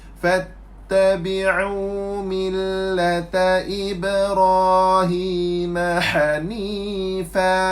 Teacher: huruf fa tempat parking dia dua bibir